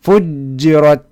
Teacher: jiimka halkaa ku jira waxaa saaran qalqala